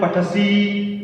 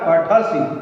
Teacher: पठ धातु का प्रथम पुरुष में पठति, पठतः, पठन्ति, पठसि, कुछ लोग बोलते हैं पठसी, गलत है वो, ह्रस्व इकार है ना, पठसि, मति, कम समय देना है, एक मात्रा